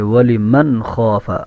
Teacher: خا موٹی ہے، یہ ہا نہیں ہے · نون کے اندر آواز کو روکنا نہیں ہے، جلدی سے پڑھنا ہے۔ ولی من خاف، یہ درست نہیں ہے، تیزی کے ساتھ پڑھیں گے۔